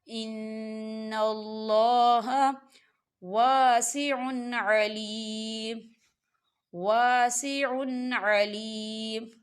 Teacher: نون مشدد ہے، یہاں غنہ ہوگا